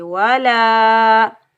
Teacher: لام کے اوپر زبر آگے الف خالی، یہ الف مدہ، اس کو ہم ایک الف کی مقدار کھینچ کر ادا کریں گے